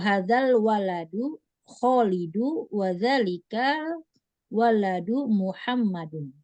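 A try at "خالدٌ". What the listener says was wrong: Nah, ini Khalidunnya ini domatain. Khalidun. Sama kayak Muhammadun.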